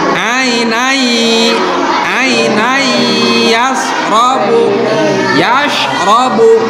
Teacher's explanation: cara pemasukannya itu agak ditahan sebentar gitu, dan suaranya itu agak mendengung ke hidung.